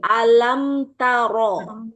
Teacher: Ee ta ini tipis. Ro itu harus tebal. Maka ro di sini ketika tebal berarti mencekungkan lidah. Tengah lidah.